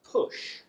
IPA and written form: pʊʆ (push)